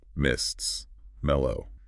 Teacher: It's all liquids and nasals. L's, M's, SS, X, F's.